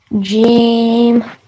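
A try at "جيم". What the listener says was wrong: Okay, a little bit longer, darling. G. When you finish on the sound at the end, keep your lips closed, okay? Don't open them again, otherwise you make a bouncy sound, which makes the sound incorrect. G.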